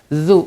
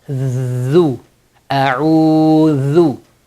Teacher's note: Dhal is soft. You stick the tongue out, hold it with the upper and lower teeth and blow a soft Z sound.